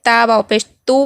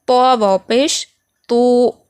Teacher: تا کو پتلا پڑھیں گے، تا واو پیش تو پڑھیں گے، اور تو کو تھوڑا موٹا پڑھیں گے